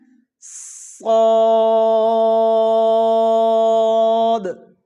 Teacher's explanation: اس کی ادائیگی اس کی موٹائی جو ہے وہ آخر تک رہنی چاہیے. یہ نہ کہ شروع میں تو ہم اس کو موٹا پڑھیں اور بعد میں آخر میں جا کے اس کی آواز جو ہے وہ باریک ہو جائے ایسے نہیں.